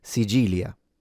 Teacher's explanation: might change the C sound into a G sound and pronounce it Sigilia.